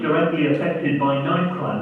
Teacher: it has its main prominence on the first element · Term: compound stress pattern